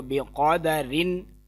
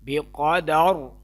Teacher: اگر وقف کریں گے تو پھر یہ را موٹی پڑھی جائے گی، کیونکہ را ساکن ہو جائے گی۔ اگر را ساکن سے پہلے زبر آ جائے تو پھر وہ را موٹی پڑھی جاتی ہے۔